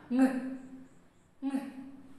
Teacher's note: Air passes through the nose instead of the mouth. Soft palate back there drops. So raised towards the soft palate, our back of the tongue raised towards the soft palate.